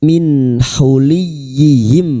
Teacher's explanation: Nun sukun bertemu ha idhar halqi. Nun sukun dibaca jelas tanpa mendengung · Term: idhar halki